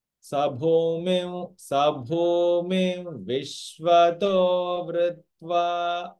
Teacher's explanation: anuswara is followed by a va, so there is a u sound that comes